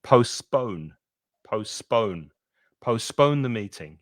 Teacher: Notice with postpone that you're stressing the second syllable, which is this one.